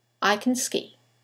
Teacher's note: Here we have the modal verb can. In the sentence, it will sound like can. The vowel disappears. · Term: weak forms